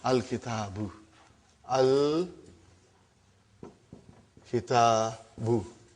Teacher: Now you see, as soon as I put al, like a magic, one vowel sign got dropped. Instead of bun, it became bu.